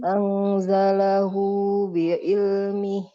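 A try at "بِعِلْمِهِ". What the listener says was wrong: Bi'ilmi. Hati-hati ainnya seperti hamzah.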